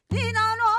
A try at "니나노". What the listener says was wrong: 그렇게 소리를 버터를 바르셔가지고 예. 이렇게 찍찍 밀어내지 마시고 그냥 니나노